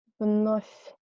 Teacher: Here is V again in the end of the word. So it should be read like F. Вновь. And here is a soft sign.